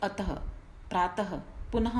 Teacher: विसर्ग जो है इसका उच्चारण ह हलंत जैसा होता है, मतलब छोटे से ह का जैसा इसका उच्चारण होता है।